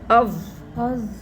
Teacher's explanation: اس میں زبان باہر آئے گی دانتوں سے